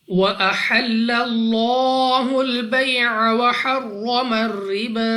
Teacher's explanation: اب یہاں پر ہمارے پاس لام آف اللہ سے پہلے حرف پر زبر ہے، تو اس لام آف اللہ کو پر یعنی موٹا پڑھیں گے